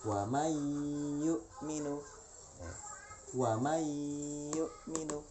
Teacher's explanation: Non mati ketemu dengan ya dibaca idgham. Artinya bunyi non matinya itu hilang ya.